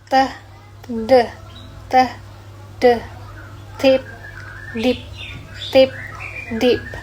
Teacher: T. Voiceless alveolar plosive. And then D. Voice alveolar plosive.